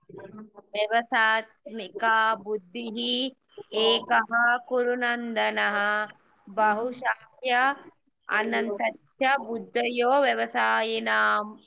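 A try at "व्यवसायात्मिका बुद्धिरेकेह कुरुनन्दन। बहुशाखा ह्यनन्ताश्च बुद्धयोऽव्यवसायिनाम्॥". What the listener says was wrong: Okay, like విడదీసిన correct గానే ఉంది, అన్ని కలిపేస్తే పర్ఫెక్ట్ అయిపోతుంది మాతాజీ.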